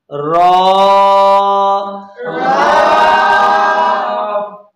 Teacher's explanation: زبان کی نوک مائل بپشت اور مقابل کے تالو سے را ادا ہوگی